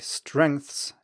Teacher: strengths in English contains three consonants at the start then one vowel and then three consonant sounds at the end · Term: consonant clusters